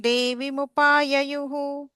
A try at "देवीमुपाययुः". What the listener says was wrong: And then Devi, little bit of a stretch there. Okay, it's a long E there.